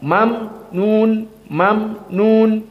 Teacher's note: Maka ini qiraah jumhur, ajrun ghairu mamnun. Tentunya mimnya tidak qalqalah, tapi mim intibak. Mamnun, mamnun.